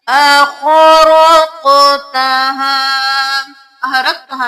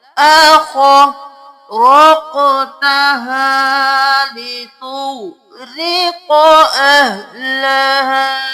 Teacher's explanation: یہاں پہ خو کو موٹا پڑھنا ہے, قوف کو قلقلہ